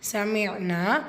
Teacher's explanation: நூன் முஷத்தா குன்னா செய்யுங்க, கூடவே அலிஃப் மத்தா 2 ஹரக்கத்தளவு நீட்டம் கொடுங்க. சமிஅனா ஸோ நூனில் அலிஃப் மத்தா 2 ஹரக்கத்தளவு நீட்டம் கொடுங்க